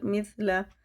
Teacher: سا باریک ہوتا ہے، زبان کی نوک اوپر کے دانتوں سے لگا کے تب پڑھا جاتا ہے